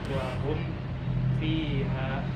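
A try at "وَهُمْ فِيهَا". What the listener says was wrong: Jadi jangan mim sukunya jangan ditahan ya. Karena itu ijhar. Jadi nggak boleh. Wahum fiha nggak boleh. Biasa aja. Wahum fiha gitu kan.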